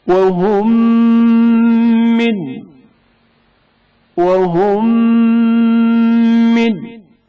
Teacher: میم ساکن کا میم حرکت دار میں ادغام ہونا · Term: ادغام متماثلین